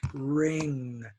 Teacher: you put your tongue like a k and it stops all the voice all the sound it stops the air and the air comes through the nose